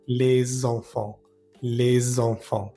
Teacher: en la frase les enfants ni la d ni la s suenan y se nasalizan algunos sonidos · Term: sonidos nasales